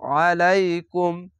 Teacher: আলাইকুম, এখানেও যা আছে, জায়গায় থামা ভালো না, মিলানো ভালো, তার জন্য কুম বলে মিলিয়ে পড়বেন, আইনটিকে মোটা করে গলা চিপে পড়বেন